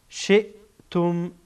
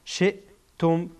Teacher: همزه از اخیر حلق ادا میشه. شئتم تارهای صوتی کاملا بند میشه، قفل میشه.